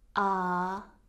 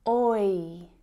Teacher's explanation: Compare that monophthong sound which is just one sound with the diphthong sound which is two sounds combined to make one sound.